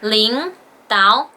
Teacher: did you notice that the first two third tones both become the second tones